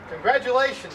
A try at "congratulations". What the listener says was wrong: It's not a T or a D, it's a G.